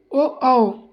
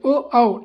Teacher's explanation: कंठ ओष्ठ है, कंठ मतलब गला, ओष्ठ मतलब ओठ, ओ औ, तो गोल हो रहे हैं होठ प्रोनाउंस करते वक्त, और आवाज़ निकल रही गले से